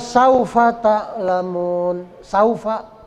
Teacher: misalnya k saufamun saufa ya sa itu kan wau sukun tapi huruf sebelumnya huruf Sin harakatnya fathah maka dia fungsi sebagai huruf madnya gugur enggak boleh dibaca panjang